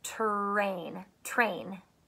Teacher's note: sometimes when we're talking we say train and it sounds like ch